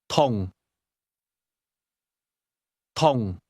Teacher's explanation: Did you hear the midfalling tone?